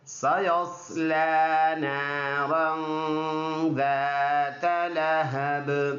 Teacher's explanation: صاد اور سین دونوں سیٹی والے حروف میں سے ہے، اور اس میں ویسل ساؤنڈ سیٹی جیسے آواز اس میں سے نکلے گا۔ لام پر کڑی زبر ہے، 1 الف کے مقدار لمبا کر کے پڑھنا ہے۔